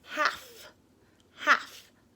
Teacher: this L could be really tricky because the L sound can be silent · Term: silent L